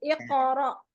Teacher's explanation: Jadi dilepas aja kan dia nempel kan pangkal lidah kan kalau qaf itu kan pangkal lidah bagian bawah ketemu sama langit yang lunak kan. Kalau misalnya udah nempel terus pada saat kol-kolahnya dilepas gitu.